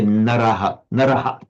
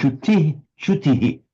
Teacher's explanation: So the shadow vowel reflects the immediately preceding vowel.